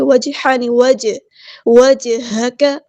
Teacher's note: کاف کی زبر کو ہم لمبا نہیں کریں گے، کاف باریک لائٹ لیٹر ہے، اس کو سمپل پڑھیں گے۔